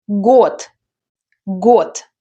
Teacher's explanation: Voiced consonants at the end of words are becoming voiceless. · There is D at the end, but we pronounce T.